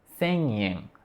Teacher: A gente não tem nenhum ponto de articulação, nada o obstrui, né, a nossa pronúncia, mas a gente ativa o nariz e para pronunciar, para "sen yen". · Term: nasal